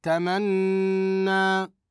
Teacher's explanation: وقفنا على النون بالتشديد بالغنه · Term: النون المشدده